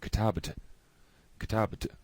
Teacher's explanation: B and the T, almost requires a little tiny vowel sound in between them to get from one to the other